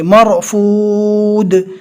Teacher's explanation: یہاں پر جزم والی رو سے پہلے زبر ہے، لہذا جزم والی رو کو پور پڑھیں گے